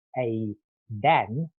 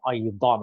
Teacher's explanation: So the dal, the ordinary D, tongue's on the teeth. The dad, the tongue is retroflex, so a little bit up and back on the alveolar ridge, that bit just above the teeth. But it's more about the vowels quality.